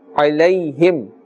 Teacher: Ayn, we must put a little bit more emphasis on the ayn itself. Its makhraj is from the center of the throat.